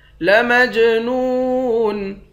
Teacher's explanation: لَمَجْنُونَ، جیم پر قلقلہ کریں گے، نون کو واو کے ساتھ ملا کر واو کو ایک الف کے مقدار کھینچ کر پڑھیں گے، آخر میں نون ساکن ہے۔